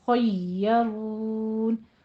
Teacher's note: یا کی تشدید ادا کرنی ہے، لیکن یا چونکہ نرمی والے حروف میں سے ہے تو نرمی سے اس کو ادا کریں